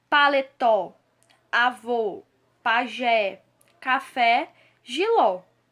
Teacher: Todas essas palavras têm como sílaba tônica a última. A última sílaba é a mais forte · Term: oxítonos